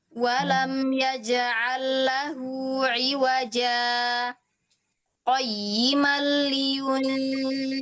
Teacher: di iwaja ibu harus berhenti dulu, tapi enggak boleh ngambil nafas. Itu berhenti tanpa mengambil nafas. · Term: sakta